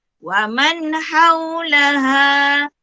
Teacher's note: Mesti dibaca dengan jelas dan terang tanpa dengung. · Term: izhar halki